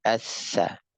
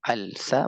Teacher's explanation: maka lamnya melebur, diidghamkan, dimasukkan, dileburkan lamnya ke huruf berikutnya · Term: Lam syamsiyah